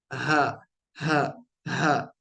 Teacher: थोड़ा सा वाइब्रेशन जैसा महसूस होता है हा बोलने में ठीक है हा और फिर उसके बाद सेंटर वाले हलक की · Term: गोल ह